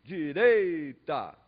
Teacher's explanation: ele intensificou a penúltima sílaba da palavra